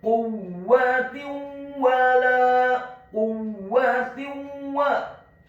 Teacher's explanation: Huruf ta marbutah yang harokatnya adalah kasrah tanwin bertemu dengan huruf wawu yang fathah. Hukum bacaannya adalah idgham bi gunnah.